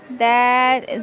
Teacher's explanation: जुबान की नोक ऊपर के दो दांतों के जड़ में लगाने से दल अदा होता है